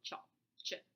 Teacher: Shop is a fricative, it's a narrow closure, but chop starts out with total closure like a stop, but it doesn't totally release it, it partially releases it like with the sh, right? So that's why it's called chop, ch, an affricate.